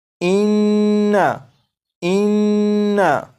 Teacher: गुन्ना जब करेंगे तो इसकी मिकदार 1 अलिफ के बराबर रखेंगे